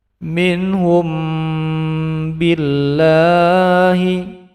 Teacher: suara sengau . Inilah bunyi ikhfa syafawi, dua harakat.